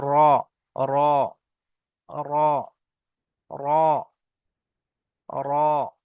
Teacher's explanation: জীবের আগার উল্টো পিঠ এবং তার বরাবার উপরের তালুর সাথে লাগিয়ে উচ্চারিত হয় র